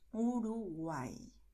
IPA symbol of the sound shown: i